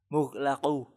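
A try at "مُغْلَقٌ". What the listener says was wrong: Coba perbaiki qafnya. Mughlaqun.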